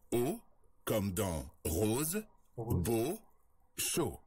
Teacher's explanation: On l'appelle le O fermé. Pour prononcer ce son, on ferme davantage la bouche que pour le O ouvert.